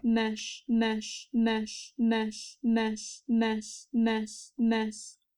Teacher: at the end of the word, I expect the fricative to be a little bit softer in volume